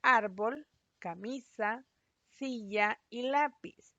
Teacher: En el caso de las graves o llanas, son palabras de más de una sílaba que llevan la mayor fuerza de voz en la penúltima sílaba